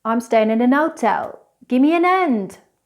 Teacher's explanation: In some English accents, like the Cockney British accent, the H is always dropped.